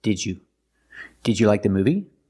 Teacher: pronounce the first d as a real d d d DJ the second D changes to the J sound like juice and jump so together did you not juu but did did you did